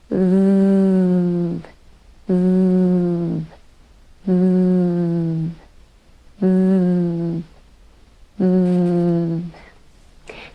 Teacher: we produce the th the voiced th with the tongue absolutely between the teeth